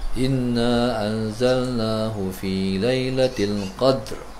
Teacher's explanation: Ra tu kena baca, bukan qad habis.